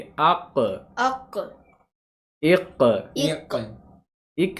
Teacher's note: कल कला है ना जी आवाज लौटेगी